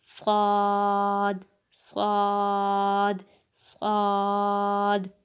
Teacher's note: صاد جو ہے یہ بالکل سین کی طرح ادا کرتے ہیں، زبان کی نوک اور دونوں دانتوں کے اندرونی کنارے سے